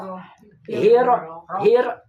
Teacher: sudah ada getaran sekali ya langsung si lidah itu ditarik ke belakang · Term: inhirab